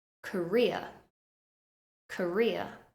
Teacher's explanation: we stress the second syllable